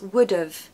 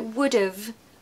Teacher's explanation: natural so the pronunciation becomes would have we've got awah there instead of have we're going to say of of we're even going to take away that H